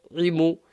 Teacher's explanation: And the ain is from the middle of the throat. Imu. Give it some emphasis.